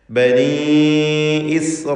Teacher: ഇസ്രായീൽ എന്നതിലുള്ള ദീർഘം മദ് മുത്തസിൽ വാജിബാണ് നിർബന്ധമായും. അലിഫിനെ 4-5 ഹറക്കത്തിൻ്റെ അളവിൽ ദീർഘിപ്പിക്കുക